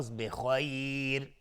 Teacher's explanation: را اینجا ترقیق هست وقتی که توقف کردیم چون قبلش یا اومده و اگرم عبورم بکنیم باز ترقیق میشه چون تنوین جر پایینشه.